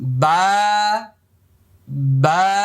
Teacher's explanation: দেখেন স্বাভাবিকভাবে আমি আয়না দিয়ে দেখছি, বা বা, লক্ষ্য করুন, বা এক আলিফ পরিমাণ লম্বা হবে, মুখটা খালি ফাঁকা হবে। বা, আমার সাথে বলুন, বা, আরেকবার বলুন, বা।